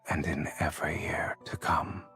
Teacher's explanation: his voice got very, like, low and vocal fry there